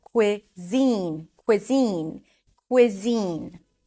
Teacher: is Zine a z sound a high e and an N the primary stress is on the second syllable